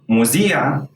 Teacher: both letters have the same sound both sounds emerged into one sound a regular z sound